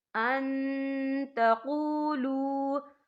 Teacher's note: نون ساکن کی آواز کو ناک میں چھپائیں گے